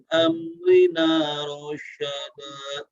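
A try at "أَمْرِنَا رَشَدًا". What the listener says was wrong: Ujungnya sedikit lagi, kurang cepat. Nah, pas rasyada, sya-nya jangan ngambil jarak dulu ketika diucapkan ya, tapi langsung rasya. Amrina rasya. Amrina rasyada. Iya, jadi kayak kayak lebih menekan rosyada. Nah tadanya seperti itu.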